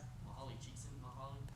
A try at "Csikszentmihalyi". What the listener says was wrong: Mihai Csikszentmihalyi. The L is silent. You're close, though. Pretty good.